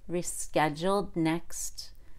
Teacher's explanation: I released T before the H in Howard.